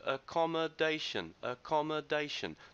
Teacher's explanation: the stress is on the fourth syllable